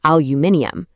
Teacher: In the UK, they literally add an extra I and a whole extra syllable saying aluminium